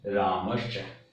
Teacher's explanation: तो चैवर्ण, चैवर्ण यदि स के बाद में च आता है तो हम ष्टुत्व संधि का नियम लगाते हैं और यहाँ पर दंत्य सकार की जगह तालव्य सकार बनेगा और उदाहरण में संधि बनेगी रामश्च।